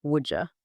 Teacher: a D colliding with a Y. Would you naturally becomes would you. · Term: assimilation